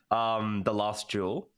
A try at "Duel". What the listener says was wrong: It sounds like you're saying Jewel.